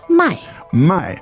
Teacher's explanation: first word is 卖 mai, fourth tone